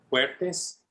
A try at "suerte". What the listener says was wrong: Suerte. With an S. S-U-E. S-U-E-R-T-E.